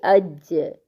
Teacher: جیم ساکن پر قلقلہ ہوتا ہے، اس لیے اس کو ہم اج نہیں کہیں گے، اج، ٹھیک ہے، اج۔